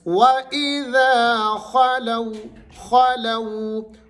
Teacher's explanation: واو ساکن سے پہلے حرف کے اوپر کیا ہے، زبر ہے، تو آپ نے اس کو نرمی سے پڑھنا ہے۔ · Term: واو لین